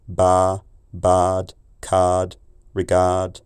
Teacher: In England, and particularly in London, the R in lard, bard, card, regard is pronounced so much in the throat as to be little more than the Middle or Italian a